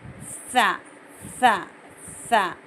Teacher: जब हम बोलते हैं, तो हवा दांतों के सांधों में से बाहर निकलती। फील करके देखिए, सा सा सा।